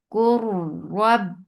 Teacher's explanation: Rab and ra will be heavy because there is fatha on it. Rab and ba will get sifa of shidda. The makhraj will cut off the sound.